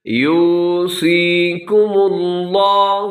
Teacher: لفظ اللہ کو موٹا رکھیے گا، اس سے پہلے میم کے اوپر پیش کی وجہ سے